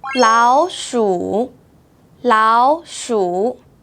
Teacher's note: when the third tone is followed by another third tone, the first third tone changes to second tone.